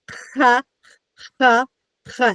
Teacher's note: It comes from the back of your throat.